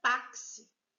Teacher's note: A palavra táxi já vem acentuada indicando a sílaba tônica, que não é a última, é a penúltima. Se é a penúltima, ela é paroxítona.